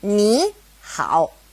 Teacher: if it's a third tone and a third tone next to each other knee how it changes to a second tone and a third tone · when two third tones are side by side, the first one becomes a second tone